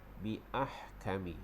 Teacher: Ahkami tu huruf ha tu kita bagi dia pedas. Biahkami, huruf ha tu makhrajnya di tengah kerongkong